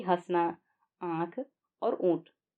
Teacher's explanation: आंगन को बोलते समय हम मुंह के साथ साथ नाक का भी इस्तेमाल करते हैं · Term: अनुनासिक स्वर